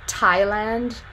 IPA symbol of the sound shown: tʰ